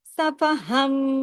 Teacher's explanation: اقلاب کا قاعدہ لگ گیا, نون کی آواز میم میں بدل گئی. صفہن نہیں پڑھیں گے, صفہم, میم کی آواز پیدا ہو جائے گی.